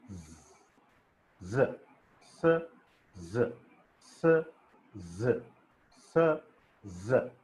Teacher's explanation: the tip of the tongue is raised and it is touching the alveolar ridge. That's why these are called alveolar fricatives. · The tip of the tongue touches the alveolar ridge.